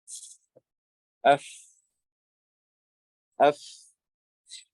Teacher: the inside of the lower lip with the tips of the upper incisors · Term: fa